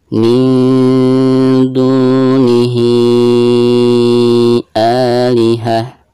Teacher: Bacaan A-nya dibaca 2 harokat karena dihukumi mad badal ya